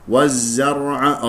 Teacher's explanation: الراء مفخمه لانها ساكنه قبلها مفتوح